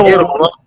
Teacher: کوئی غننے کی آپ کو خوشبو نہیں آ رہی